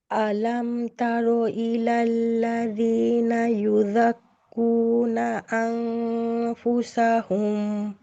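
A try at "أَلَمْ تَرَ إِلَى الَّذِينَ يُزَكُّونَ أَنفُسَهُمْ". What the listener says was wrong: আপু, র, র হেভি করেন।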